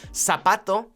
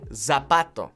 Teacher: in Spanish the Z makes an S sound not a z sound